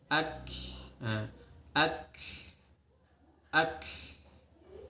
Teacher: Jadi ketika mengucapkan kaf, terutama ketika sukun, itu nafasnya mengalir.